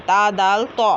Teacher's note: तो और ता, दोनों का मखरज एक ही है, ज़बान की नोक और सामने के ऊपर वाले 2 दांतों की जड़ से अदा होता है। ता दाल तो, है ना, हमने पढ़ा है मखरज, मगर दोनों में फ़र्क क्या है कि तो पुर होता है और ता पतला होता है।